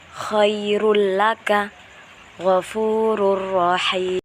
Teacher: Contohnya yaitu khairul laka ghafurur rahim. Jadi huruf yang pertama itu harus masuk ke huruf yang kedua dengan tanpa dengung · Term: idgham bila gunnah